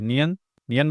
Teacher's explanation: नियन तो आपको लगेगा ऐसा कि सिर्फ नाक से ध्वनि निकल रहा है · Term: अनु